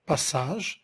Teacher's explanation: Le S, c'est une consonne fricative, apico-alvéolaire, sourde, appelée sifflante.